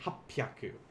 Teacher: we have that double p that double consonant so we're going to pause as we say this instead of saying hapiyaku this would be happyaku there is a